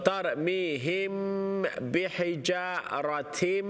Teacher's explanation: तरमीहिम मीम साकिन for a बा इख्फा शफवी गुन्ना